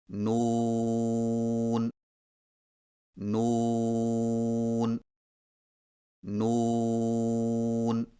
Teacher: زبان کے باریک کنارے کو اوپر والے دانتوں کے مسوڑوں سے لگا کر ہونٹوں کو چونچ کی مانند گول کرتے ہوئے باریک آواز میں پڑھیں